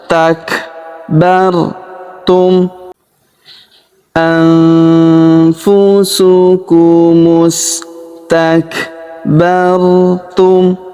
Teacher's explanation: Huruf kaf berharokat sukun kita berikan hambusan.